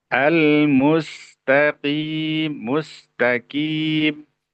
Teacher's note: Huruf qof tentunya itu tidak boleh ada hamasnya ya. Tidak boleh ada haasnya karena bukan huruf haas ya. · Tidak boleh. Qaf itu sama sekali tidak boleh ada aliran napas ya yang keluar dari huruf qaf.